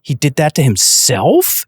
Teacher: And it went up at the end, uptalk.